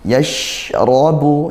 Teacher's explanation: Ainai, seperti itu. Yashrabu, shin sukun, tengah lidah naik ke langit-langit, dan dia desis, tafashi, disebarkan ya, desisannya gitu.